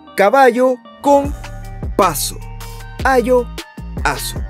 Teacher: desde la vocal acentuada de la palabra coinciden los sonidos vocálicos Pero y aquí viene la diferencia no coinciden los sonidos consonánticos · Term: rimas asonantes